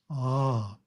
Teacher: First syllable is A, pronounced as the English word ah, but prolonged.